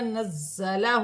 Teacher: زا مشدد ہے، جمع والا حرف ہے، سٹی کے ساتھ ادا کیا جائے گا